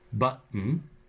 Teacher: between two vowels where the first vowel is stressed button there the T is replaced by the glottal stop · There the T is replaced by the glottal stop. It is again between two vowels, but with the extra condition that the last vowel is an N, which is syllabic. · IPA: [bʌʔn]